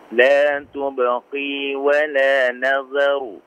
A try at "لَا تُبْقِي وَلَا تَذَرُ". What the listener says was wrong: Afwan, pakai tak ya. Tadhar.